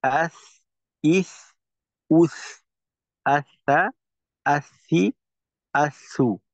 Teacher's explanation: সিনের মাখরাজটা হইলো জিওভার আগা সামনের নিচের দুই দাঁতের পেটের সঙ্গে লাগাইয়া। এই মাখরাজের ক্ষেত্রে কিন্তু বলা আছে যে দুই দাঁতের পেট ও আগার সঙ্গে লাগাইয়া।